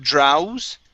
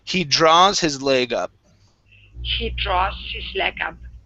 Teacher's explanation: the AW is only an ah sound